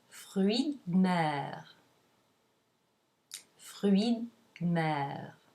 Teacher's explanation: the mute E of the word de drops completely. So in fruits de mer, the tip of the tongue is touching the back of the upper teeth for the D, and you leave the tongue there, and while you bring the lips together for the M.